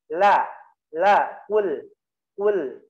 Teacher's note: ujung sisi luar lidah, ya, disentuhkan ke antara gusi dengan gigi, ya. Lebih tepatnya di gigi sedikit, ya.